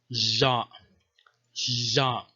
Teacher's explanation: this was a pharyngealized lateral voiced fricative